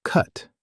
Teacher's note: For cut, your mouth is more relaxed and the sound is in the middle.